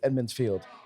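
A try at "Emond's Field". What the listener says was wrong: Emmons Field. Are you saying a D? I feel like you're saying it with the D. Emmons.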